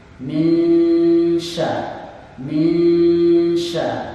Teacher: Nun sukun bertemu dengan huruf shin. Hukum bacaannya adalah ikhfa. Shinnya dibaca desis, tebal. Min syarril, dan dipastikan huruf ro yang keluar getarannya minimal 2 getaran.